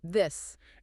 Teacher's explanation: In English, we use those two letters for the hard, vibrating sound in the word this